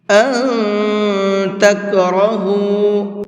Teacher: أَن تَكْرَهُوا، اس نون کے اندر اخفا کریں گے، یعنی کہ ناک میں آواز کو چھپا کر کے پڑھیں گے